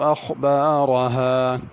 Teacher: اخبارها کی خا کو پر کرنا ہے اور را کو بھی پر کرنا ہے